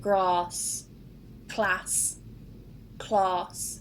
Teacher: you'll notice that in the north it's a very open a sound a very short and in the south it's a long r